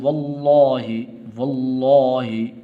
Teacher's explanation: واو کو آگے لام کے ساتھ ملانا ہے